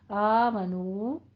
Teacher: نو کو آپ نے دونوں ہونٹوں کو گول کیجئے اور لمبا کر کے آمنو ادا کیجئے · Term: الف مدہ و مدہ